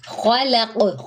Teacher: خا اور قاف پر ہے یعنی موٹے ہیں، ان دونوں کے درمیان میں لام جو ہے وہ باریک ہے، تو اس لیے اس چیز کا خیال رکھنا ہے، جو حرف موٹا ہے اس کو موٹا پڑھے، جو باریک ہے اس کو باریک پڑھے۔